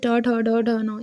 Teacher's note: ट जो होता है वो मूर्धा वर्ण के अंतर्गत आता है, ठीक है। जैसे ट, ठ, ड, ढ, न ये होता है ना, ये मूर्धा वर्ण के अंतर्गत है